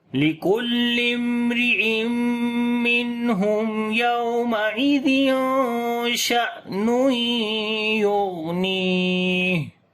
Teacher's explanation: جب حمزہ کے اوپر جزم آئے تو جھٹکا دے کر پڑھتے ہیں، یعنی کہ یہاں پر صفت شدت ہوگی ، صفت شدت کا مطلب ہوتا ہے آواز کا بند ہو